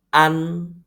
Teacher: saya tutup hidung bunyinya tidak begitu kedengaran tidak begitu terang bunyinya maka kita sebut ini adalah vokal hidung karena nada tersebut membutuhkan rongga hidung untuk dibunyikan